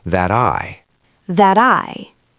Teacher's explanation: This is another flap T in American English. That I. The T is between vowels, so it becomes a D. That I. That I.